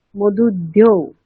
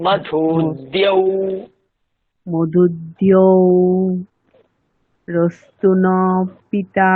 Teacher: আপনার আপনার ধকার চলে আসছে, আপনাকে দকার বলতে হবে।